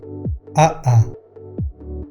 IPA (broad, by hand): aʔa